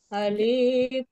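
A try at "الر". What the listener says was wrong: Alif, hati-hati, alifnya tidak panjang. Alifnya pendek saja, satu harakat. Alif, alif la langsung.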